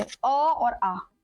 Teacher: कंठ से बोले जाने वाले स्वर कंठ से अ और आ।